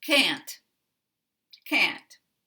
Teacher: If you make can negative, negatives are stressed in English sentences. So we don't reduce the word can't. We keep the same vowel as the dictionary.